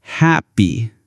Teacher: the word happy has two syllables. Happy P. The stress is on the first one. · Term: word stress